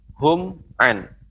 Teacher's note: mim mati bertemu dengan ain, mimnya tidak boleh dipantulkan